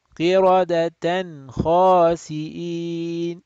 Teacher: So we do not stretch the nasal sound.